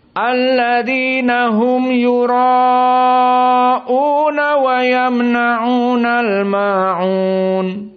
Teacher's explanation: Perhatian jumhur yura 4 dan una hanya 2 harokat. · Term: tawassut